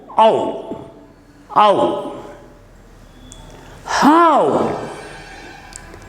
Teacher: We begin with a and slip to u. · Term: diphthong